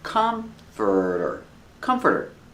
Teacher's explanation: The stress is on the first syllable. It's three syllables.